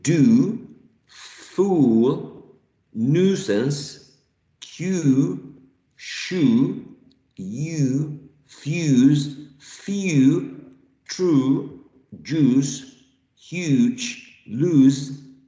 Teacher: So this is a long sound, back and high.